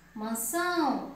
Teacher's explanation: Mas na palavra mansão, mansão, a sílaba mais forte é são, porque tem um tio, tá?